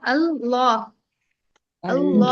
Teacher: ہمیں پہلا والا لام تو باریک پڑھنا ہے، بعد والا جو ہے سیکنڈ لام اس کو ہمیں موٹا پڑھنا ہے نا. ایک لام یہ دوسرا لام جی.